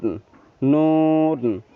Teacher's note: জিহ্বার আগা তার বরাবর উপরের তালুর সাথে লাগিয়ে সেখান থেকে একটি হরফ উচ্চারণ হয় নুন, নুন। এই যে পিকচারের মধ্যে খেয়াল করুন, জিহ্বার আগাটা গিয়ে তার বরাবর উপরে, জিহ্বার আগা আপনি সোজা যদি উপরের দিকে উঠান তাহলে যে বরাবর যাবে, জিহ্বাকে সামনে আগিয়ে না বাড়িয়ে সরাসরি আপনি উপরের দিকে উঠাবেন।